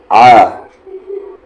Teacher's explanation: सबसे पहली चीज़ आइन, आइन की आवाज़, आइन की आवाज़ कहाँ से आती है? बीच वाले हलक से